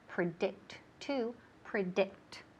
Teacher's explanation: el énfasis recae en ¿qué? En la segunda sílaba.